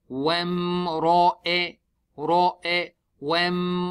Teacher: Ra is thick because it has a fatha.